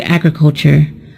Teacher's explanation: the word agriculture is a noun and it is stressed on the first syllable